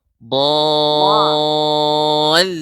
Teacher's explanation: di antara sifat adalah istitalah. Jadi lidah itu agak seperti ke depan.